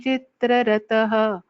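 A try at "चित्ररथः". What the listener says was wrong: Chitraratha, the tha should be chanted more clearly. Tha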